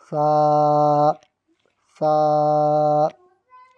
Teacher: سا، سا کے اوپر تین نقطے، سا، سا کے اوپر تین نقطے۔ اس میں سیٹی کی آواز نہیں آئے گی، سا یہ نہیں پڑھیں گے بلکہ دونوں دانتوں کے بیچ میں زبان کو رکھیں گے۔